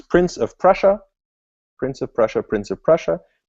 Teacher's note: of the tongue so it's holding it in that position but the front is floppy enough for it to sort of vibrate against that that Ridge behind your teeth